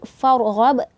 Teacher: Ini ra tebal, tafkhim dibacanya karena sebelum ra ini ada harokat fathah